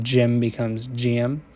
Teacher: the kit vowel is palatalized and diphthongized